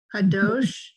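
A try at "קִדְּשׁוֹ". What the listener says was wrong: It's the root is kadosh, but look at the vowels. They're a little different. Kad show. Kad show.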